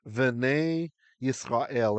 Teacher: you'll notice it's v'nei, not b'nei, because it's coming right after the u.